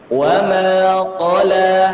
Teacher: La itu biasanya dipengaruhi oleh huruf qaf di depannya yang tebal. Jadi lamnya jadi ikutan tebal. Padahal la itu harus tipis.